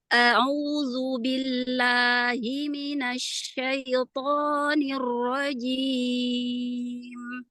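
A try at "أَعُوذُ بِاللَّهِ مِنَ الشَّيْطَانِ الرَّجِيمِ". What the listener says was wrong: Linnya selesaikan dulu. Syaito. Hamzah di awal ringankan. A'udzu, a'udzu.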